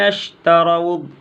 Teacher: را کو پر پڑھیں گے، یہاں پہ مد متصل کریں گے۔